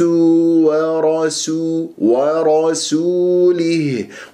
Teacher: البعض يفخم السنين لمجاورتها للراء المفخم مفتوح ويقول ورسوله خطا